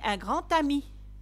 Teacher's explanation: Par exemple, quand je dis un grand ami. Donc là, le D, on ne prononce pas le D, mais on fait la liaison avec le T.